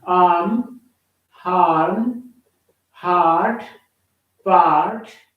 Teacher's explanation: the english ah is somewhat longer than the hindi